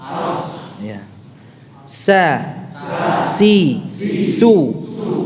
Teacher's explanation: bawah kalau tadi kan ke atas ini sekarang ke bawah ya sejajar ujung lidahnya menempel pada bagian dalam dari gigi seri bawah